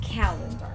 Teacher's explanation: Calendar is accented in the first, or rather on the first syllable